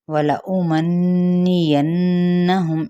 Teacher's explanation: ان دونوں نون پہ کیا ہے، غنہ کرنا ہے، لیکن حرکات کو نہیں کھینچیں گے، میم پہ اظہار کر کے پڑھیں گے۔